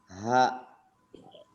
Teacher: ha diucapkan dengan pangkal tenggorokan berarti di di bagian bawah tenggorokan pengucapannya sifatnya yang pertama dia · diucapkan dengan pangkal tenggorokan berarti di di bagian bawah tenggorokan pengucapannya sifatnya yang pertama dia Hames mengalirkan napas